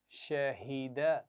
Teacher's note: शहीदा नहीं पढ़ना, हा की आवाज़ लंबी नहीं करेंगे